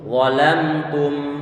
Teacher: Ini suara gunnah pada huruf mim yang dalam keadaan sukun.